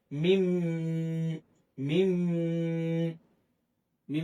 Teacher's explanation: মিম টাকে তাশেদ দিয়া গুন্না সহিত পড়তে হবে। মিম গুন্না হবে। দুই ঠোঁট মিলবে।